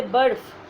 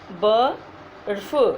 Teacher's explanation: जैसे बर्फ, देखिए आप बर्फ, र का पूरा उच्चारण नहीं हो रहा है